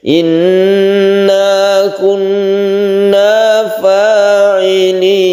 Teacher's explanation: Jadi fa tidak perlu terlalu panjang, hanya satu alif karena itu mad thobi'i.